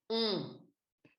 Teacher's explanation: Ensuite, on a le son on, qui est un son pareil, c'est un son nasal, O nasal.